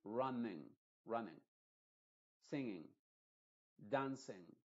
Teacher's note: la vocal I, esta de acá, se va a pronunciar no como una I original, sino como una I modificada, es decir, con el sonido de E. Se va a decir running, running, singing, dancing. · en todas las palabras que terminan en ing, la ng, esa G no se pronuncia. La N solamente se pronuncia de forma nasal